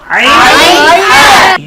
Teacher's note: কণ্ঠনালীর মধ্যখান থেকে, হলকের মধ্যখান থেকে 2টি হরফ উচ্চারিত হয়, আইন হা।